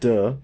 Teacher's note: voiced it's in our oral cavity when we make it duh we make it at our alveolar Ridge and it's a stop because we block airflow and then release it